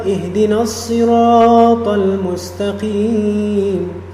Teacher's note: Kalau misalnya kita waqafkan dan kita qata' di situ, maka mustaqim, qim di sini, maka yang tadi yang madnya mad asli tabi'i, maka dia menjadi mad arid lis sukun. Bisa 2 harokat, bisa 4 harokat, bisa 6 harokat, sesuai konsistennya dia berapa untuk membaca surat ini.